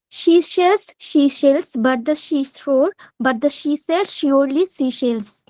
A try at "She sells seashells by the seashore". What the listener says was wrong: No, no, no, no. There's no but. There's a by first and then but.